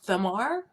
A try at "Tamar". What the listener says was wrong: The H is silent. It's Tamar.